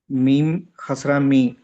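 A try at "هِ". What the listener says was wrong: మీమ్ కాదు, అది హా. మీమ్ ఇలా కనబడుతుంది.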